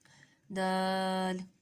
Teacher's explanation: دال کا مخرج ہے زبان کی نوک ثنایا اولیہ کی جڑ۔